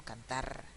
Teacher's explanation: en mi dialecto las R's finales generalmente las pronuncio múltiples, pero en la mayoría de los dialectos va a ser simple.